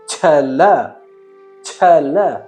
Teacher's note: ಸ್ವಲ್ಪ ಹೆಚ್ಚಿನ ಗಾಳಿಯನ್ನ ಬಳಸಿ ಹೇಳುತ್ತೇವೆ ಛ ಎಂಬ ಅಕ್ಷರವನ್ನ ಉಚ್ಚರಿಸುವಾಗ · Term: ಮಹಾಪ್ರಾಣಾಕ್ಷರ